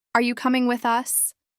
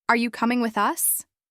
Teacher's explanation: When I use a flat tone, are you coming with us? There's no real emotional cue. It can even feel a little cold or robotic.